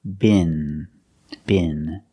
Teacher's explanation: the tip of the tongue is touching the roof of the mouth in the front, just behind the teeth. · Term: regular N